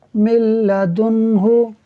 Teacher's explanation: यहाँ भी नून साकिन के बाद लाम हुरूफ यरमलून में से है और यहाँ भी इदगाम होगा लेकिन बग़ैर गुन्ने के, यानी मीम को लाम से तो मिलाएंगे मगर गुन्ना नहीं करेंगे